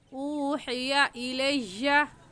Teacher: کیونکہ یہ بھی بات ہم تختی نمبر 8 نورانی قاعدے میں پڑھ چکے ہیں کہ واو ساکن سے پہلے پیش آ جائے تو وہ واو مدہ کہلاتا ہے، اور واو مدہ کو ایک الف کی مقدار کھینچ کر پڑھتے ہیں